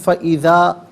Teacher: ذا کو ہمیں ایک الف کی مقدار کھینچ کر پڑھنا ہے، 2 حرکات کی مقدار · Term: الف مدہ